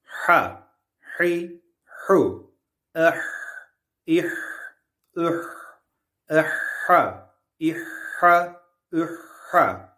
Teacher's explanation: boğazın ortasında biraz sıkılmasıyla çıkar